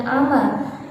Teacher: ketika ada fathah tanwin dibaca waqaf atau fathah tanwin di akhir kalimat, an dibaca waqaf menjadi a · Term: mat iwat